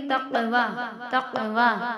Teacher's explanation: تقوی میں قاف پہ ساکن ہے، یعنی اس کو پڑھتے وقت اس کے مخرج ٹکر کھا کر الگ ہوں گے، آواز پلٹے گی،